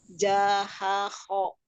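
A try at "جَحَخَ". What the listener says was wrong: Jahahu. Tidak diturunkan, dinaikkan.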